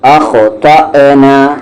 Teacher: جھٹکے کے ساتھ اخطأنا اور تا کو ہیوی کرتے ہوئے